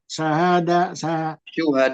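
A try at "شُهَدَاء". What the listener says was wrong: Syuhada. Domah itu syahnya.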